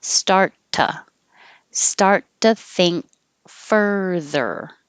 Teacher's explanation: I hold the T and I release it with the to, which changes to ta.